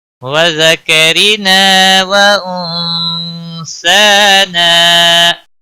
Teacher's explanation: وذکرنا وانثانا، نون ساکن پر اخفا ہوگا، اس اخفا کو اخفا حقیقی کہتے ہیں، گناہ کے ساتھ پڑھیں گے۔ سا کے اوپر کھڑی زبر ہے، ایک الف کے برابر کھینچ کر پڑھیں گے، نا الف مدہ ہے، ایک الف کے برابر کھینچ کر پڑھیں گے۔